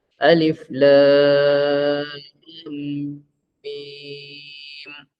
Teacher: Alif 1 harakat, Lam 6 harakat, Mim pun 6 harakat.